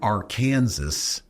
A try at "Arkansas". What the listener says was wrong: It's not called that. It's Arkansas. Don't pronounce the S.